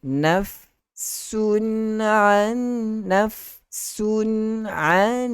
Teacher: Nun mati bertemu dengan nun. Idgham ma'al gunnah.